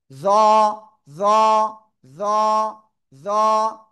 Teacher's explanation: জিহ্বার আগায় উপরে দুই দাঁতের আগায় লাগিয়ে মোটা আওয়াজে উচ্চারণ করব।